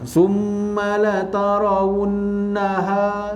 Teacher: nun bersabdu, didengung 2 harakat, wajibul gunnah